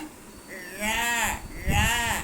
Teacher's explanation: அந்த அன்னத்துக்கு அடியில போயிடுறோம் நாக்கு வருடுது அந்த நாக்கின் நுனி வருது